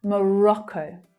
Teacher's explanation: So that final syllable is the /əʊ/ vowel sound but the stress syllable in the middle is the short sound.